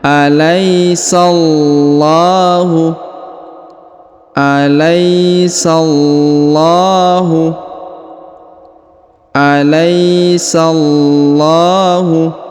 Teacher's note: lam ya karena terdapat tanda tasdid atau tanda penekanan ya kemudian dipanjangkan dua harakat karena terdapat Alif kecil di atasnya